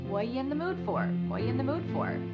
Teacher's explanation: The word are is gone, and the word you has been reduced to ya.